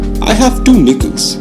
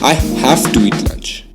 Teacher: notice how the first use of have ends with the v sound and the second ends with f